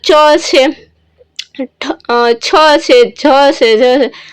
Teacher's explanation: તાળવીથી અવાજ આવતો હોય એવું આપણે બોલતા હોય ત્યાં તાળવું છે એ આપણું ચોટતું હોય એવું આપણને લાગે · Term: તાલવ્ય વ્યંજન